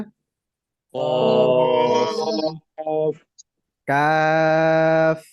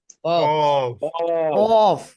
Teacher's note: আইন, আইন, গইন, গইন, ফা, ফা, ফা, ফা, কফ, কফ, কফ উচ্চারণ হয় জিহ্বার গোড়া থেকে। এটা অটোমেটিকলি আসে, শুধু আমরা উচ্চারণটা ভারী করব তাহলেই হয়ে যাবে।